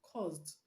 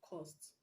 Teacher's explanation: the s in cause is pronounced z